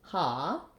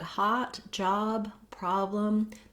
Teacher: So I rewrote that here for you with the letters AH to help you visualize and think of it as an ah rather than having any rounding